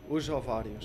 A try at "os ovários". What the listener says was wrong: Não digas o us. Diz só o.